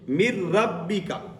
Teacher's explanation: ادغام کامل, مکمل طور پر ملایا گیا ہے · ہم نے نون کو چھوڑ دیا, میم کو کس کے ساتھ جا کر ملایا, را کے ساتھ